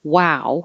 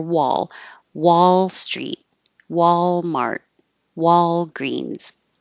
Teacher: hold your tongue in the L position for a little bit longer so you can you can hear the L and don't round your lips for an L so wall my lips have to start small for the W